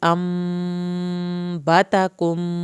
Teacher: میم ساکن کے بعد با ہے، ایک الف کے برابر دیر لگے گی ، انبتکم، کم پہ بھی ایک الف کے برابر دیر لگے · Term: ادغام